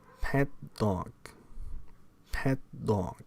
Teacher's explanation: That is, you can either release or not release the pent-up air behind the alveolar blockage, resulting in a noise. If you say my pet dog Rover, it is likely that you will not release the T of pet. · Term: Unreleased stops